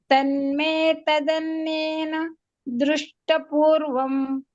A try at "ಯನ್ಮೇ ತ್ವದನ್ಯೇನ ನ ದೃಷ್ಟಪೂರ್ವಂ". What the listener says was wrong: ತದನ್ಯೇನ ನ, ಇನ್ನೊಂದು ನ ಇದೆ. ಆಮೇಲೆ ತನ್ಮೇ ಅಲ್ಲ, ಎನ್ಮೇ.